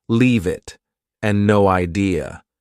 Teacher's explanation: Both sound like they have no spaces between the words